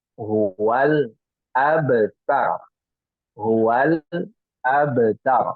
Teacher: di sini ada qalqalah ya, huruf ba yang sukun ya, maka dia dipantulkan